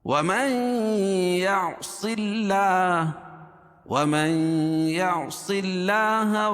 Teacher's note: اللہ کے لام سے پہلے زیر ہو تو اللہ کا لام باریک پڑھا جاتا ہے